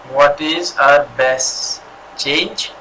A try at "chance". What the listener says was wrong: Chance, sorry, it's with C. Chance.